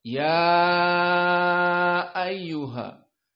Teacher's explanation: ya ayyuha dibaca dalam keadaan al-isba karena dia majaiz munfasil, ya matabi'i bertemu dengan a hamzah ayyuha dalam keadaan kalimat yang terpisah.